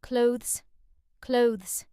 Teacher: The th sound is very soft here and almost disappears. So instead of saying clothes, practice saying clothes, just one smooth sound.